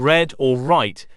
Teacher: consonant which means air is allowed to escape through the mouth it is a central consonant which means it is produced by allowing the Airstream to flow over the middle of the tongue rather than the sides the Airstream mechanism is pulmonic which means it is articulated by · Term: alveola approximate